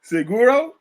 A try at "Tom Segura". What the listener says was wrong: It's U-R-A, Segura. Tom Segura. It's G-U-R-A. Yeah, it's Segura.